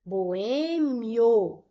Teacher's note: Então, eu tenho uma paroxítona terminada em ditongo. Um ditongo que é ditongo crescente. Vai do som mais fraco para o mais forte. Boêmio, o O sai mais forte.